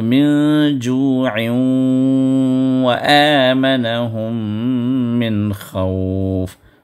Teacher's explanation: تنوین کا جو نون ہے وہ واو میں داخل ہو گیا، لیکن ساتھ میں پوری طرح غنہ نہیں ہوگا، تھوڑا سا آدھا غنہ ہوگا، غنّے کا کچھ حصہ جو ہے اس کے وہاں پر ادا ہوگا. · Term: ادغام مع الغنہ ناقصہ